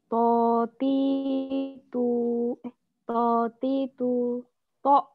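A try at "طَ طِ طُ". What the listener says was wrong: Belum naik itu ya. Itu belum naik. Ya, kalau belum naik jadinya gini ya. Totitubato. Ya, totitubat. Nah, itu belum naik.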